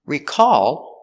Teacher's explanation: And the verb is recall with the stress on the second syllable.